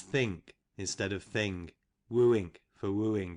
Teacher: In some places we sound k instead of g